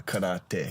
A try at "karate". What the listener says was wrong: gotta roll your R's. trill your T's.